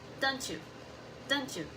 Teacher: The T and J combine to create a new sound.